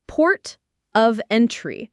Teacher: The main stress falls on port and the first syllable of entry.